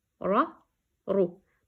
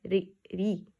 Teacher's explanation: When ra holding fatha and dhamma, the sound is heavy. Ra, ru. But when ra has kasra underneath, you have to read it softly, like ri, ri.